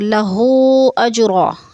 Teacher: 4 الفی مد ہے، 4 الف کے برابر کھینچ کر پڑھنا ہے۔ اجرا میں قلقلہ ہو رہا ہے، جیم ساکن ہے اور حروف قلقلہ میں سے ہے تو اس کو ہلا کر پڑھنا ہے۔ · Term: مد منفصل